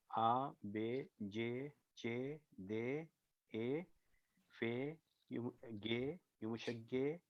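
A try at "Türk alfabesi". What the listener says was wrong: नहीं, दोनों युमुशागे नहीं है, एक गे है दूसरा युमुशागे है।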